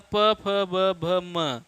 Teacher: ये ओठ से उच्चरित होते हैं, बोलते समय ओठ सट जाते हैं, इसलिए ओष्ठ कहे जाएंगे